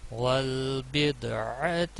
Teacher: دال کے اوپر قلقلہ ہوگا